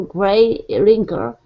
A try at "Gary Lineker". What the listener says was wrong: Okay, so Gary Lineker. Yeah, it's Gary, and gray is the color, of course, and then Gary is the name.